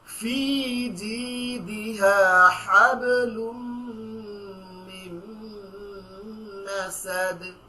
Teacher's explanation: আর মাসাদের এখানে দালের নিচে উপর একটা জজম রয়েছে, এখানে আমরা থামার কারণে সেখানে একটা কলকলা হবে